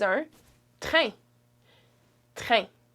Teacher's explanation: That's a nasal vowel, it's a nasal sound, so you don't pronounce the N at the end.